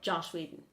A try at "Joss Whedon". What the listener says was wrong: You said Josh.